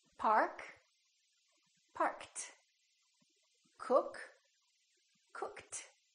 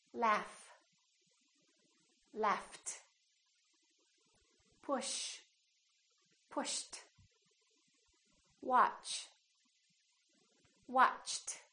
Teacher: If the last letter of the verb is a voiceless consonant, the ED becomes a T.